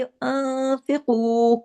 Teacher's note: नून साकिन के बाद फा आ रहा है, यहाँ पे इख्फा हकीकी